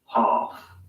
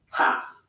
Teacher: Ah in UK English normally becomes an a sound in American English.